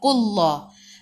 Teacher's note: Sebelum Allah bagi atas, bagi depan kena baca tebal.